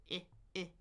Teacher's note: tongue in the middle then moving forward. Also, your jaw closes. So, it's ah in the middle.